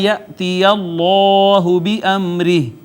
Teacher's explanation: اس میں جلالت کا ما قبل مفتوح ہے، اس میں جلالت مفخم پڑھا جائے گا